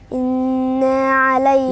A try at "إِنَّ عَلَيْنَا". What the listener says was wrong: لا، هي نون ألف ولا نون بس؟ النون وراها ألف، نون بس. فلما أقولش إنا يبقى أنا زودت حرف في القرآن مش موجود فيه، فخلي بالي، هي نون مشددة بس. إن علينا. إن علينا، مش إنا.